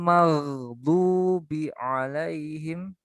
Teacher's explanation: Nah, adnal halqi ya, adnal halqi. Tenggorokan paling atas.